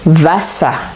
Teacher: c'est un R qui se transforme en A mais prononcé de manière plus courte. La bouche est légèrement ouverte et euh les lèvres sont décontractées et le bout de la langue euh est euh devant les incisives inférieures. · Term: R vocalisé